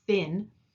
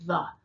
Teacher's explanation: the voiceless th is like in thin and the voiced th is the as in the